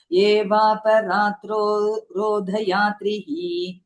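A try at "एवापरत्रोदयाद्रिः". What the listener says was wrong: वापराद् இல்ல, वापरत्.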